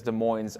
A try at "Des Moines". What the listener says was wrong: Hey, as a college hoops stan, you should know it's Des Moines. The S is silent.